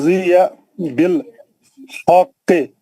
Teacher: ये कॉफ मुशद्दिद है सर ये 2 बार पढ़ा जाएगा। व ख तो इसका खुरदुरा आवाज आएगा ख्वा का।